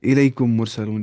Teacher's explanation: میم کو میم سے ملا کر گنہ کے ساتھ پڑھا جائے گا. تو میم کو آپ میم کے ساتھ ملائیں گے، تو میم کو میم کے ساتھ ملانے کے بعد گنہ کے ساتھ پڑھنا ہوتا ہے یہاں پہ. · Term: ادغام شفوی